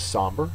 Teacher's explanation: somber is an adjective first syllable is accented